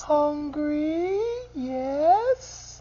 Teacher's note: Parentese is simply the way we pretty much naturally talk to babies. So it's that high, low pitch and then long vowel sounds